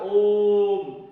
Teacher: ओम में क्या है, ह्रस्व स्वर और दीर्घ स्वर से अधिक समय लग रहा है तो इसे कहेंगे प्लुत स्वर कहेंगे।